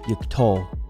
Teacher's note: Now we want the accent to be on the final syllable, so it should be yiktol.